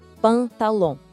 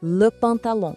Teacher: O som sai um pouco pelo nariz, sabe? · Em francês, a gente fala le pantalon. Presta bem atenção nesse final, que é meio anasalado.